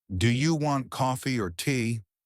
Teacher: Our voice rises and then falls. It makes you sound expressive and natural. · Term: rise fall intonation